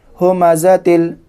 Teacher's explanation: تنوین کو لام میں ادغام کر دیے بغیر گنہ کے